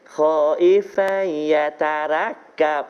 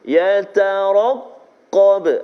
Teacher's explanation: Ra tebal baris atas, qaf juga tebal sebab dia baris atas, dan juga huruf isti'la.